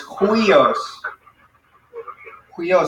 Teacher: So it's upsilon, iota, and so this is a rough breathing mark. So because it's a rough breathing mark, it doesn't sound like we, but it sounds like an H in front of it